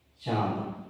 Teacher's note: तो इसमें नाक और मुंह दोनों का प्रयोग हो रहा है बोलने में। इस जो अनुनासिक निकल रहा है वो नाक और मुंह दोनों से निकल रहा है, श्वास से।